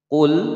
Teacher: Sekali lagi, qul attakhadtum 'indallahi 'ahdan falan yukhlifallah. Qul, lam berharokat sukun dibaca jelas, tidak boleh dipantulkan.